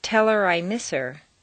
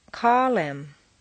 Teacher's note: on personal pronouns it's common to drop the H